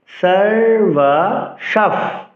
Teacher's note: বিসর্গের পরের পরের বর্ণটি আমি দুবার উচ্চারণ করলাম। ছন্দের গঠন অনুসারে অনুষ্ঠ ছন্দ হলে এক থেকে সাত অক্ষরের মধ্যে যদি বিসর্গ থাকে সেক্ষেত্রে পরের ব্যঞ্জনটি দুবার উচ্চারিত হবে।